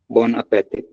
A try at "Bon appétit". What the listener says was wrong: appétit. The last T is not pronounced.